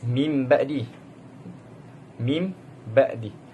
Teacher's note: Menukar bunyi nun sakinah atau tanwin kepada bunyi mim apabila bertemu huruf ba serta dibaca dengan dengungan. Huruf iqlab adalah ba saja. · Apabila nun sakinah atau tanwin bertemu huruf ba, maka hukumnya adalah iqlab. Bunyi nun ditukar menjadi mim dan dibaca mim ba'di. Mim ba'di. Daripada min ba'di dibaca, ditukarkan nun sakinah kepada mim.